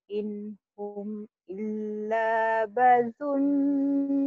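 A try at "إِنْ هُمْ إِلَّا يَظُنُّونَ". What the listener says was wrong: Bukan badunun, ya dunun. Titiknya dua, toh.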